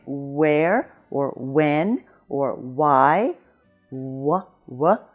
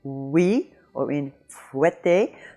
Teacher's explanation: the semi-vowel starts from the vowel position of ou, but it quickly transitions into another vowel, as in oui. But when you say when in English, and see that your lips are in the position for ou, when, where, oui. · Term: semi-vowel w